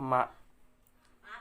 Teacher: bertemunya antara bibir atas dan bawah dengan menekan sedikit lebih ringan, keluar darinya huruf ma.